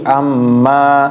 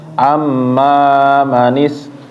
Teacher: amma 2 harokat, jangan sampai 3 harokat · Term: mat tobi'i